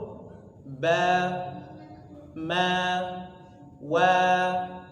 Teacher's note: kedua bibir bibir bertemu menghasilkan huruf